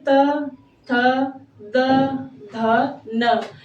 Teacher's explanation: दांतों से इसका उच्चारण होता है। दांतों से मतलब त वर्ग में जो त, थ, द, ध, न ये पांच वर्ण अगर आते हैं त वर्ग के अंतर्गत तो वो दंत से उच्चारित होते हैं। · जैसे बोल के देख लीजिए, त थ द ध न, ये 5 वर्ण जो है दांत से लगे हुए उच्चरित होते हैं, इसलिए इन्हें दंत वर्ण कहते हैं